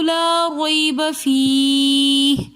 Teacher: لا ریب را کے اوپر زبر ہے تو اس لیے ہم نے را کو موٹا پڑھا، اور یہاں پر یا مدہ نہیں ہے، رویبہ یہاں پر یا لین ہے، تو اس لیے ہم اس کو کھینچ کر نہیں پڑھیں گے۔